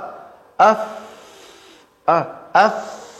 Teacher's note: Oh, berarti ujung lidah, ujung gigi seri atas bertemu perut bibir bawah. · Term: huruf fa